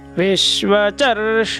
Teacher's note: आप यहाँ देख सकते हैं रक्षोहा, र को भी अनुदात आया है और क्षो को, तो हमको रक्षोहा रक्षोहा रक्षोहा विश्वचर्षणिरभि, वी को जैसे हमने पहले भी सीखा था, वी को ह्रस्व है तो विश्व नीचे दबाना है